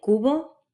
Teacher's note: basically a V made with both lips